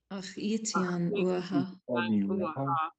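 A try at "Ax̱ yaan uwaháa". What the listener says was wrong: I'm hearing a high tone E under ach it yan uaha.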